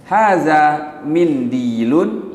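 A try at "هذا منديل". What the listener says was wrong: Ini bukan pertanyaan, intonasinya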